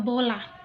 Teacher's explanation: Vokal O termasuk dalam vokal sedang dengan posisi lidah berada di bagian belakang